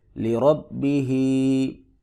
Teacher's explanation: را کو پر کر کے پڑھیں گے، با کو سختی سے پڑھیں گے · ہا کے نیچے کھڑی زیر ہے، ایک الف کو برابر لمبا کریں گے